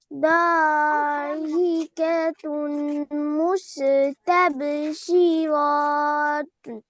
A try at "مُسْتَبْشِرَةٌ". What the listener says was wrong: শিরা, শিরা, শিরত না, শির। এই যে গোলতা থাকলে হা হয়ে যায় না?